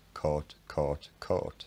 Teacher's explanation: when you listen to an older cumbrian relative of mine sort of in his mid 80s say these words they come across sounding pretty much identical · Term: vowel mergers